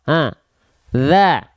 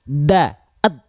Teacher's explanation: Ujung lidah kita sentuhkan tipis-tipis saja kepada mana? Kepada apa? Kepada ujung gigi sari atas kita. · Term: huruf dzal